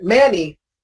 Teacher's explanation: one of the rarest cases in English where the letter A is pronounced eh